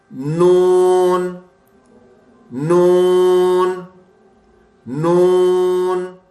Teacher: ये तालू से निकलती है। जबान की नोक ऊपर के तालू से मिलकर निकलती है।